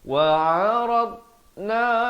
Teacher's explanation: Dad ni makhrajnya di tepi lidah, tapi dia bukan huruf lantunan, jangan berikan lantunan.